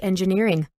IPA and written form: ˌɛnʤɪˈnɪərɪŋ (Engineering)